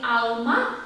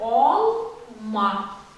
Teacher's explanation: более задний, более широкий, несколько оглубленный звук ау. Когда мы говорим А, у нас как будто воздух во рту, больше пространства.